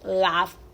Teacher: el verbo Love y no se lee Love se lee Love la o es como una a entre una a y una o